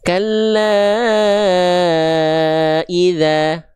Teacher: bacanya agak panjang sedikit dua kali ayun. Dalam istilah tajwid namanya harakat ya. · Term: mad thobi'i